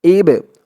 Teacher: বাটা কলকলার হরফ ধাক্কা দিয়ে পড়তে হবে